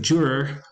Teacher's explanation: with the retroflex r in English for the word juror